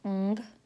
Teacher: the last sound is made in the back of the mouth, and it is ng, as in ping.